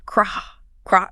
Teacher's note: The tongue pulls back. It's a K sound immediately sliding into an R.